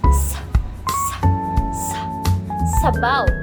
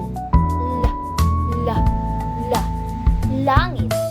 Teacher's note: ang ating dulong dila ay tumatama sa gilagid sa bahaging likod ng itaas na ngipit. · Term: panggilagid